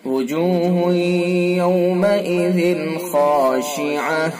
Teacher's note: ذال کے نیچے 2 زیر کی تنوین ہے، تنوین کے بعد حروف حلقی میں سے خا ہے، لہذا اظہار حلقی ہوگا